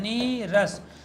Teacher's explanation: ह्रस्व ई का परिवर्तन दीर्घ ई में हो जाता है